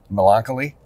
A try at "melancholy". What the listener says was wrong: He's putting a lot of the wrong emphasis on the syllables.